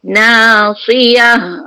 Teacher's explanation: Ta marbuta tu bila matikan dia jadi ha besar.